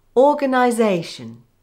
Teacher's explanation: Or-gan-i-zation. The first syllable is given secondary stress, the second and third are weak, the fourth syllable is given primary stress, and the fifth is weak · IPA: /ˌɔː-gən-aɪ-ˈzeɪ-ʃən/